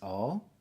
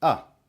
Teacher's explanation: you do it shorter and like with an open mouth with a little bit more open mouth.